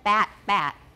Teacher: in Taiwan English they are often bat bat right they sound the same